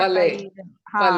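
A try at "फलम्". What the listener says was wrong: Phalam. Phalam. Pa only. Don't say pronounce F sound. Phalam. Generally people pronounce with F sound. It's wrong.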